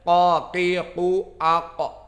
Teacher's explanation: qaf di sini makhrajnya karena sukun kita bahas makhrajnya aqsa al-lisan paling dalam dengan al-hanak al-a'la. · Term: qalqalah